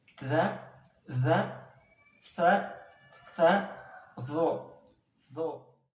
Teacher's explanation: Cara pengucapannya, ujung lidah ditempelkan ke ujung gigi seri atas.